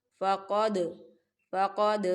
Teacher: فقد دال ساکن ہے، دال حروف قلقلہ کا ورڈ ہے، تو یہاں پر قلقلہ ہوگا